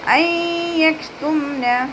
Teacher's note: ഐ യക്തുംന നൂൻ സാക്കിനയ്ക്ക് ശേഷം ഇദ്ഗാം ബിഗുന്നയുടെ അക്ഷരമായിട്ടുള്ള യാ വന്നിട്ടുണ്ട്. നൂൻ സാക്കിനയെ യായിലേക്ക് ലയിപ്പിച്ച് ഉന്നയോടുകൂടി ഓതാൻ ശ്രദ്ധിക്കുക